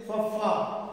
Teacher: ਉਹ ਜੁੜਦੇ ਆ, ਤੇ ਜਦੋਂ ਆਪਾਂ ਫੱਫੇ ਦਾ ਉਚਾਰਨ ਕਰਨਾ ਤਾਂ ਹੇਠਲੇ ਜਿਹੜੇ ਬੁੱਲ ਹੈਗੇ ਉਹ ਉਤਲੇ ਦੰਦਾਂ ਕੋਲ ਜਾ ਕੇ ਤਾਂ ਉਚਾਰਨ ਹੁੰਦਾ ਜਿਵੇਂ ਫੱਫਾ। ਉਹਦੇ ਵਿੱਚ ਇਸ ਤਰੀਕੇ ਨਾਲ ਇਹ ਜਿਹੜੀ ਦੰਤ ਹੋਠੀ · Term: ਦੰਤ ਹੋਠੀ ਧੁਨੀ